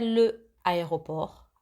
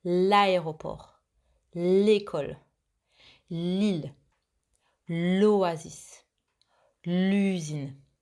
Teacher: I don't say le aéroport, I say l'aéroport. I make the connection together.